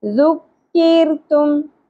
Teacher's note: ذال آ گیا، اخفا مع الغنہ، ذکرتم، ذال نرمی سے ہوگا، را باریک پڑی جائے گی کیونکہ را ساکن سے پہلے زیر آ گیا